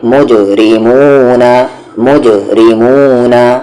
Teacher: جیم پر یہاں پر سکون ہے یعنی کہ جزم ہے, تو قلقلہ ہوگا, آواز کو باؤنس کر کے پڑھیں گے